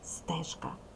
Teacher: перший звук приголосний твердий глухий позначений буквою С